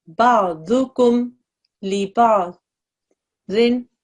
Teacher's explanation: You don't stretch the meme sound at all here.